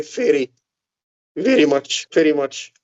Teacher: V sounds are often pronounced as F in Syria